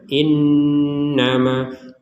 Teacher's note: Nun bertasdid maka kita sama-sama membacanya dengan dengungan bukan hanya dengungan tapi ada jeda yang proporsional gitu ya jangan sekedar yang penting dengung bukan yang penting dengung